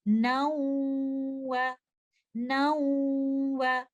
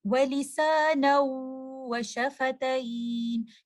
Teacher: جب بھی نون ساکنہ کے بعد آپ کو لیٹر واو نظر آئے گا تو آپ اس مرجنگ کے وقت غنہ بھی ساتھ کریں گے، نیزل ساؤنڈ بھی ساتھ آنی چاہیے۔ · نون ساکنہ کو واو کے ساتھ مرج کر رہے ہیں، اس کے ساتھ ملا رہے ہیں، تو آپ کو یہاں پر غنہ کی آواز سنائی دے گی